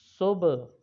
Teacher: ہا حلق کے بالکل نچلے والے حصے سے ادا ہوتا ہے، اور جو حا ہے وہ حلق کے درمیان والے حصے سے ادا ہوتا ہے، تو اس لیے اس کو پڑھیں گے صبح۔